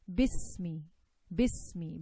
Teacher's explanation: But here we have a meme. The gap between the seen and the meme will be less.